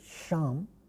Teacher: At times it could also be alveolar fricative. Sha is clearly a palatal fricative.